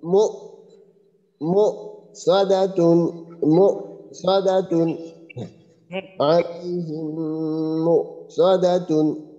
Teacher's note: হামজাতে যদি সাকিন হয় তবে ওই সময় যে আমাদের স্বরটা আছে একবারে স্বরভঙ্গ হয়ে যাবে অর্থাৎ যে স্বরটা আমরা টান দিয়ে পড়তেছিলাম ওইটা একবারে ওইখানে স্থির